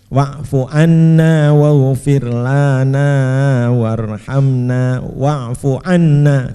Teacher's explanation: tapi wa'fuanna yang ditekan pada dengungnya